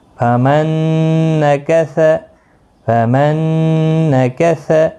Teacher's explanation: نون ساکن نہیں پڑھا جائے گا، ڈائریکٹ تشدید والے حرف کے ساتھ میم ملے گا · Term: ادغام